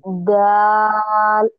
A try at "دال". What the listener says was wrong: یہ دال اور زال کو چار حرکت کے برابر کھینچنا ہے. موٹا نہیں، باریک دال.